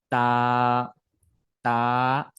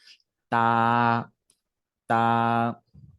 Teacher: যেমন তা, এই যে মাড়ি রয়েছে আমাদের দাঁতের, এই দাঁতের মাড়ির মাঝখান থেকে, দাঁতের মাড়ির যে আগা বলে আর কি, আমরা সরি আগা বলে থেকে, ওই আগা থেকে আমরা উচ্চারণ করবো, জিহ্বাটা আগার সাথে লাগাই দিব। যেমন তা, তা, লাগিয়ে সেটাকে আমরা একটু ছেড়ে দিব, এভাবে ছেড়ে দিব, তা, তা।